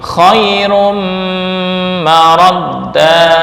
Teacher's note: huruf ditasydid dengan tarohi lebih lambat, yaitu huruf memiliki gunnah dalam pengucapan